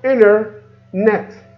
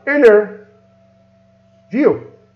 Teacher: We cut the T and we put the words together. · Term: tango sound